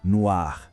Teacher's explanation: A gente adiciona um E no final e a pronúncia também muda um pouquinho, fica mais aberta.